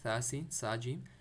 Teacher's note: सा सीन और सा जीम, तीन दोनों में सा को अपने सॉफ्ट पढ़ना है, ज़बान बाहर निकल के